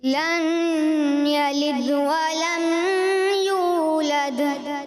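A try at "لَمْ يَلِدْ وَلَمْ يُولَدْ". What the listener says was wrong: جہاں اظہار شفوی یعنی اظہار کرنا تھا وہاں آپ نے غنہ کر دیا. لم یلد, لم میں غنہ نہیں کرنا تھا آپ نے کیا.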